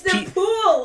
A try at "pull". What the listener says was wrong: There's no E on the end of it, so you don't pronounce the L's. So it's pou. So it's le pou.